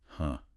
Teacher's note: a very common natural vocalization during that kind of sharp forceful exhale under load is precisely that voiceless breathy sound